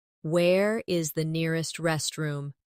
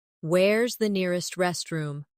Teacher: In fast speech, where is sounds like where's.